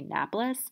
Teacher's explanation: get rid of that extra schwa that extra unstressed vowel